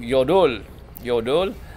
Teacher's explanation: again the accent is on the second syllable it's not yodel